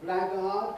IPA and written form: ˈblægɑːd (blackguard)